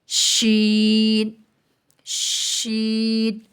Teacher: وسط زبان اور بالمقابل اوپر کا تالو